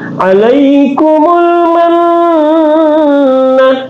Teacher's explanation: nun di sini bertasdik, berarti dia adalah gunnah, berarti didengunkan